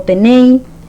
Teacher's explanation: La segunda, este voceo es empleado en el presente indicativo con las terminaciones en eis, ais, con la S apocopada como tenei